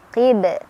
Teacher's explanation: Qib qalqalah kubro karena ada huruf qalqalah yang sukunnya karena berhenti, yaitu huruf ba ya. Ba tadinya kan dhammah, karena berhenti disukunkan. Jadilah dia pantulannya lebih besar, lebih berkumandang.